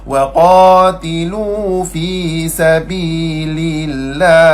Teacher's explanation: Lam kedua tu lam nipis.